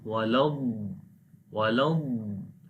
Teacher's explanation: when we connect lam with the dad, there should be the quality of dad which is called istitala.